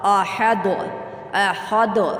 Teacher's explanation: یہاں پہ کلکلا حروف میں سے دال کلکلا آئی ہے۔ اس دال کو جب ادا کرتے ہیں تو اس پہ جنبش ہوتی ہے۔